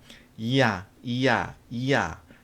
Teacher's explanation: 이 야는 이에서 시작해서 아로 끝나는 거예요. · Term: 이중 모음, 이중모음